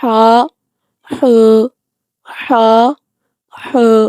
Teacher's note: حا حلق کے درمیانی حصہ سے ادا ہوتا ہے